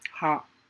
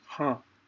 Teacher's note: Ha, they make it nasal, ha. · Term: anunasika